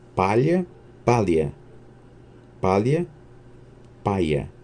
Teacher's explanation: o fenômeno da despalatalização a troca do LH por esse fenômeno consiste na perda da palatalização o LH passa para L seguida de iotacismo que a evolução de um som para a vogal i ou